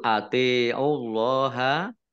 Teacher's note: Allahnya dibaca tebal karena harokat di depannya dhammah.